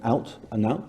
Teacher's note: Those 2 words are robust in the north of England. So you have a merger between the oot, the old oot, and the old out. They're both now out